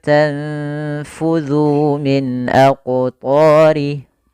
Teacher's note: Cara membacanya adalah menahan dulu suara ikhfa-nya sepanjang 2 harakat. Tanfudhu, bukan langsung.